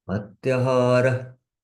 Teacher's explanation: visarga comes in between, then it is just half pronounced.